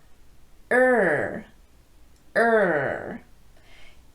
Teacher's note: some make it with the tongue tip curled upward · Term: R sound